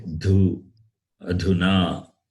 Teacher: No, again, it is dhu, Mahaprana, aspirate.